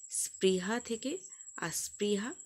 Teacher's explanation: আদিতে আ স্বরধ্বনির আগমন ঘটেছে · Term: আদি স্বরাগম